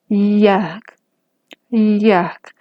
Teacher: mi lengua se va a acercar mucho a mi paladar, pero no lo va a tocar. No se va a tocar nada dentro de mi boca, dentro de mi aparato fonador. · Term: sonido aproximante